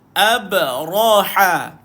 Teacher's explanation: Jangan baca ha dengan tebal. Baca ha dengan nipis.